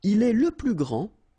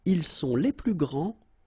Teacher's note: for the masculine, grand, so you don't pronounce the final D, will be exactly the same as the plural form for the masculine, grand.